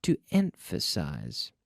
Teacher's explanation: I emphasized the first syllable.